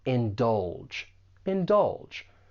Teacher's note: For pronunciation, there are two syllables. The stress is on that second syllable and that g has more of a J sound.